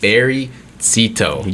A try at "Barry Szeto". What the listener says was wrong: Barry Szeto. Almost there. The Z is silent, but it's okay.